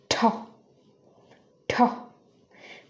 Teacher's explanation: হচ্ছে ঠ তো এর সাথে একটা ট সাউন্ড আমরা উচ্চারণ করি ট এর সাথে যদি একটা এক্সট্রা এইচ মানে হ সাউন্ড লাগিয়ে দেই তাহলে এটার উচ্চারণ হবে ঠ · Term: অ্যাসপিরেটেড সাউন্ডস